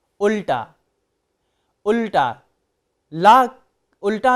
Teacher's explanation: उल्टा में जब ला का उच्चारण हो रहा है तो जीभ उलट रही है